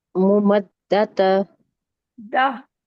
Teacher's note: जब हम स्टॉप करते हैं तो गोलता हाँ में बदल जाती है